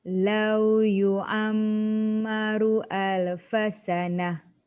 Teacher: Lau yu'ammaru mim sabdu mesti wajib 2 harakat dengung.